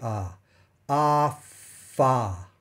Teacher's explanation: you probably shouldn't feel any vibration in your fingertips while you're making the F part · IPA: /f/